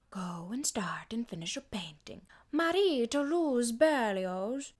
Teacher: she kind of throws away her vowels and consonants like she doesn't spend very much time on any syllable